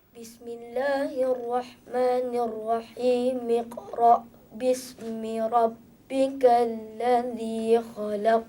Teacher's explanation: Ketika disambung, tak ada pula dengar bunyi iqra tu, tak ada.